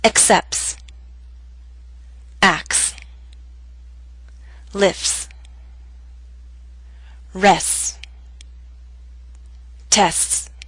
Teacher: in fast speech we leave out the T sound